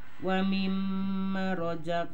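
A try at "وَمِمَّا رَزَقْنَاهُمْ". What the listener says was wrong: mana kirang panjang matebi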